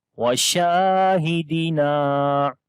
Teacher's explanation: شین کو لمبا کریں گے، الف مدہ ہے، نون کو بھی لمبا کریں گے